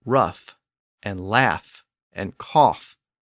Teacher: in a small group of words there was a third option in those words the fricative sound shifted to an F sound now this was a late development but we see it in